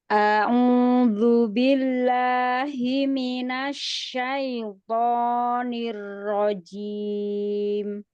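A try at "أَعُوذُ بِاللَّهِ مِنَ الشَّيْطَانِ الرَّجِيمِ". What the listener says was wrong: Masya Allah, ain yang masih hidung. Kemudian a'udzu billahi syai juga masih hidung tadi. Sempurnakan lagi, coba ulang lagi.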